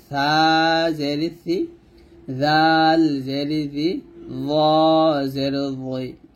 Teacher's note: তো এই সা জাল জ যখন উচ্চারণ করবেন জিহ্বার আগা সামনের উপরে 2 দাঁতের আগার সঙ্গে লাগিয়ে উচ্চারণ করবেন। তার মধ্যে জটা মোটা হবে, জটা মোটা উচ্চারণ করবেন।